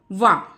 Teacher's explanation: वका ये आ जाता है वकारस दंत मूलम। ठीक है, दंत ओष्टम, ऊपर का दांत, निचला होठ, ये आ जाता है आपका अक्षर इसमें वा।